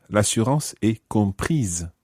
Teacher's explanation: the E goes on to the end of the word compris, and that makes you sound the S.